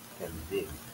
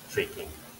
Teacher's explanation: This does not need aspiration because the K is a K, is at the beginning of the syllable, but it's not stressed, so no aspiration